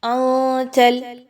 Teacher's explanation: نون ساکن کے بعد تا کا حرف آ گیا، آپ نے یہاں پہ نون کی آواز کو ناک میں لے کے جانا ہے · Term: اخفا